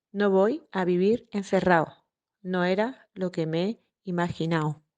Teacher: le phénomène sonore de la consonne occlusive dentale intervocalique non prononcée par les élèves sévillans